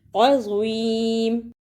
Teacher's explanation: ادا کرنے کا طریقہ، من بعد عظیم، اسے عظیم نہیں پڑھنا، غوا کی جگہ پہ زا کی آواز نہیں آنی چاہیے۔ عظیم۔